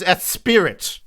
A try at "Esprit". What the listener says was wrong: No, there's only one I. It's Esprit. No, there's only one. Esprit.